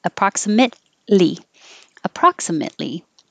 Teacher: i'm not releasing my t because the next sound is an l and i'm getting ready just to make the l approximately approximately